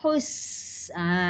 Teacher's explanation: Dan sofir bunyi berdesir tu hus.